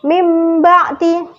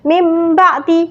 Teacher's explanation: suara nunnya kan tidak terdengar kan? Tapi yang terdengar itu suara huruf mim. Suara huruf mim mati. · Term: iqlab